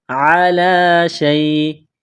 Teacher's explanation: عین گلے کے درمیان سے زور لگا کر عین کو نکالیں گے · عین، عین زبر ع، لام کڑا زبر لا، کڑا زبر ہے، ایک الف کے لمٹ میں کھینچنا ہے